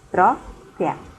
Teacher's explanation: Vocês podem observar que a sílaba tônica está na penúltima sílaba. Quando isso acontece, ela é chamada de paroxítona.